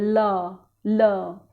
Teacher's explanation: ल बोलते समय या तो आप अपनी जीभ को दांतों से दाईं तरफ लगा दोगे या बाईं तरफ, बिना इसके ल नहीं बोल सकते। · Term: पार्श्विक